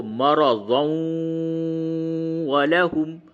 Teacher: واو پہ تشدید نہیں ہے، لیکن قاعدے کے اعتبار سے یہاں پہ ادغام مع الغنہ ہوگا